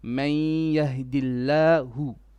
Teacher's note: May, not ma, but me. This is one of the exceptions where the fatha is not a straight flat. We incline it a bit